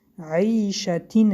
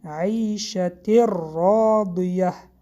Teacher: بعد از تنوین حرف را آمد ادغامی به غنه. تنوین نون را به حرف را در آورده میخوانیم. عیشتین نه، عیشت راضیه.